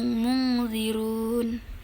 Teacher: nun mati bertemu huruf zal. Jadi dibacanya mendengung